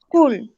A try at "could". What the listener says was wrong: pilas porque no se dice could, sino could. cuenta que la L no suena, sino could. de una directo. Could. Could. La L no suena.